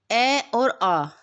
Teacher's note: अ और आ हमारा कंठ से बोला जाता है।